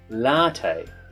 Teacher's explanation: So notice that extra emphasis on the second syllable in the word latte.